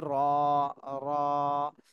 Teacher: যে এই হরফটা আমরা সবাই দুই তিনবার একটু প্র্যাকটিস করি, র র র র র জি জি এই হরফটা কিন্তু একটু সহজ আছে। র এটা জিহ্বার আগার পেট তালুর সঙ্গে লাগায়, উপরে তালুর সঙ্গে লাগায় এক আলিফ টান দিয়ে উচ্চারণ করতে হবে,